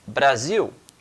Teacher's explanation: em português, principalmente aqui no Brasil, temos o costume de, por exemplo, transformar este L em um U